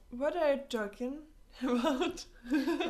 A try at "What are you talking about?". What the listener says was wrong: Можно без паузы? Там нет, блин, ничего, потому что... What are you talking about? Вот у нас вот как бы идет вот такая вот кривая. What are you talking about?